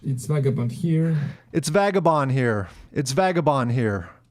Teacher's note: the D at the end of vagabond, most Americans would not emphasize it that much.